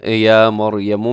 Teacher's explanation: اس میں را موٹا ہے یا مریم میں کیونکہ را ساکن سے پہلے زبر ہے